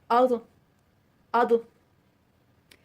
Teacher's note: آواز کو موٹا رکھیں گے، نرمی نہیں ہوگی لیکن بہت سختی بھی نہیں ہوگی۔